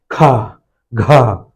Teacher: वायु मुंह से ज्यादा निष्कासित हो रही तो ये महाप्राण हो जाएंगे।